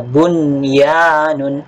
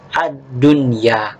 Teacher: Nun sakinah yang bertemu dengan salah satu huruf ini, baik waw maupun ya, tetap dapat dibaca dengan jelas. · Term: izhar wajib